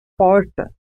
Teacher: A pronúncia porta é conhecida como R retroflexo ou R caipira. Nesse caso, há um movimento de retroflexão da língua em direção ao fundo da boca.